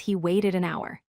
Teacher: even though hour starts with H, the H is silent, so it sounds like a vowel